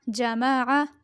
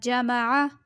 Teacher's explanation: یہ عین حلق سے ادا ہوگا